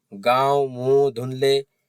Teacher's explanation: अनुनासिक स्वर जिन स्वरों के उच्चारण में हवा मुंह के साथ साथ नाक से भी निकलती है। इन स्वरों की पहचान है शब्दों के ऊपर चंद्र बिंदु लगा रहता है।